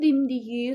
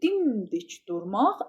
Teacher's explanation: Bir var quşun dimdiyi sona düşür. Bir də dimdik durmaq əvvələ düşür.